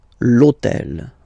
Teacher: in French we don't pronounce Ash okay so basically the first sound of the word is the vowel o